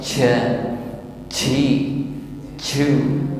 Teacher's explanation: huruf jim ini tidak boleh diucapkan dengan ham atau banyak udara yang keluar saat mengucapkannya